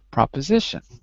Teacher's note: pro o but i say pro because that's the american way the short vowel of o is ah